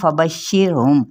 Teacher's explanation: را ساکن ما قبل زیر ہے یعنی کسرہ ہے، تو پھر کیا پڑھیں گے، اس کو باریک پڑھا جائے گا